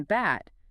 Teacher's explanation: the B sound in bat, your vocal cords are vibrating. The acoustic energy is going into creating that vibration in your larynx, not pushing air out of your mouth.